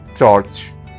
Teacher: Ch, voiceless, post-alveolar, affricate, as in church